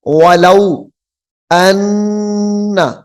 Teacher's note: غنے کے ساتھ پڑھیں گے، آواز کو ناک میں لے جانا ہے